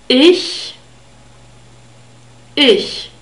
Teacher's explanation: it's formed with the middle part of the tongue and the palate · And we have a grouped consonant here. It's the soft CH sound. This is the voiceless counterpart of the Y sound.